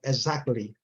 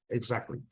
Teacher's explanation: Eu tenho ouvido muito, principalmente no inglês americano, exactly. Eles não falam esse T, não, viu? Não tem que falar desse T.